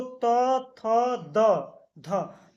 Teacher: त वर्ग का जो उच्चारण स्थान है उसमें दंत का प्रयोग होता है मतलब दांतों का प्रयोग होता है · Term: दंत वर्ण